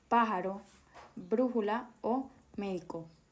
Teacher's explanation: Palabras esdújulas. La fuerza de voz está en la antepenúltima sílaba. Siempre llevan tilde, ejemplo, pájaro, brújula o médico.